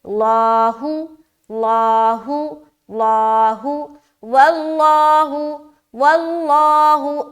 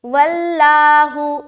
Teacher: اب لفظ اللہ کا لام یہاں پر موٹا کریں گے